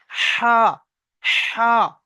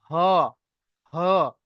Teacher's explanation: হাটা হচ্ছে বড় হা, পাতলা আওয়াজ হবে, হা, হা। বুঝতে পারছেন?